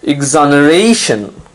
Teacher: Notice now you have the stress on the second last syllable, the syllable right before shun